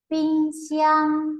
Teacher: trong đó âm tiết thứ hai được đọc nhấn mạnh và kéo dài hơn · Ví dụ ping xiang nhấn mạnh và kéo dài hơn đấy, cái từ ping nó đọc nó ngắn hơn từ xiang, nó không ngân